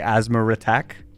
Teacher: the intrusive R like you know in um like at least in Australian English if you were to say the word asthma attack you would add an r in between the two words to make it easier to say so I would say asthma attack even though there's no R